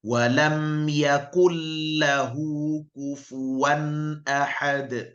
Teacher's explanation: nun mati ini, bunyi nun mati hilang, seolah-olah ini tidak ada, langsung masuk ke lamnya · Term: idgham